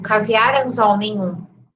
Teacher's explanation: Essas são oxítonas, né? A palavra mais forte, ou a sílaba mais forte é a última.